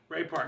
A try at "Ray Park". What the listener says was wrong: Not Parks, Park. Ray Park.